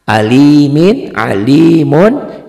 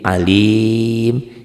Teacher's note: alimun itu kalau dihentikan bunyinya menjadi alim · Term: mad arid disukun